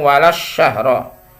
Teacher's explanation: Alif lamnya tidak dibaca atau diidgamkan ke syin itu idgham asyamsiyah